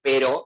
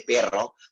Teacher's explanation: esa diferenciación entre la erre vibrante simple y la erre vibrante múltiple